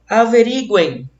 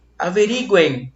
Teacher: Nós temos o E com maior som, é uma vogal. E esse M teve som de I, ele é uma semivogal na outra extremidade.